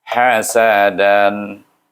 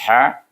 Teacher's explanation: Huruf ha ini keluarnya dari tengah halqum, sebab itu kita baca ran itu dengan izhar halqi.